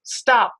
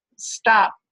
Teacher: I try and do it with a puff of air, I make that release really audible. I could write it like this with a little h, stop.